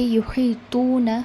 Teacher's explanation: 2 count دے کر ہم اسے کھینچ کر پڑھیں گے۔ تو کو ہم جو آپ کی زبان کی نوک ہوتی ہے وہ آپ کے جو فرنٹ کے 2 ٹیتھس ہوتے ہیں اوپر کے جو کے، اس کے پیچھے لگا دیجئے، دانتوں کے پیچھے، آپ کی زبان کی نوک، تو تا اور تو میں بہت فرق ہے، یہ یحیطون ہوگا آپ کو۔